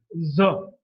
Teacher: Z is a voiced alveolar fricative. It's voiced because the vocal cords are held loosely together.